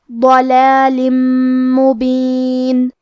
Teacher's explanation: آخری میں لام کے نیچے تنوین زیر ہے، پھر حرف المیم ہے کلمت مبین. یہاں ہم حکم الادغام کو ادا کریں گے غنہ اور تشدید کے ساتھ